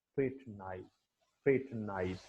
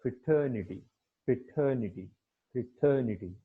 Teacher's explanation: Okay, तो वो जब वर्ब से नाउन में शिफ्ट हुआ है तो उसकी जो आप कह सकते हैं कि उसका जो स्ट्रेस है वो भी सिलेबल के ऊपर शिफ्ट हो गया है। कि पहले वाले में जो प्राइमरी स्ट्रेस है वो क्या है, फर्स्ट सिलेबल के ऊपर है, सेकंड वाले में जो प्राइमरी स्ट्रेस है वो सेकंड सिलेबल के ऊपर है।